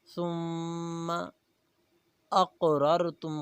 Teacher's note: من دیارکم ثم اقررتم، ثم میم مشدد ہے غنہ کریں گے۔ ثم اقررتم، قاف موٹا ہے اور قاف پر قلقلہ کریں گے، قلقلے والے حروف کو ہلا کر پڑھا جاتا ہے۔